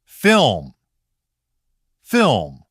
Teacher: So L can sound weaker, blurred, or almost like a faint vowel. · in faster speech, the L often doesn't stand up strongly, it can get weaker. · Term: L weakening